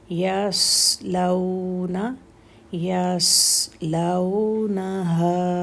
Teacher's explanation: صاد heavy ہے اور ساکن ہے تو سکون دیں گے اور اس کی سیٹی بھی کلیئر کریں گے